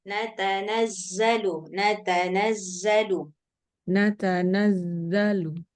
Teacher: huruf zainya kurang sofirnya